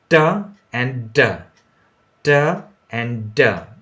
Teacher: the tip of the tongue part is going towards the alveolar ridge and meeting it there, and then it is stopping the air behind it, and then with explosion it comes out t and d, right?